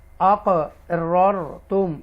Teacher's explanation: را ساکنہ سے پہلے زبر ہے تو اس کو ہم تفخیم کے ساتھ پڑھیں گے